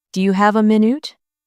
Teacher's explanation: Do you have a minute? The stress is on have and minute.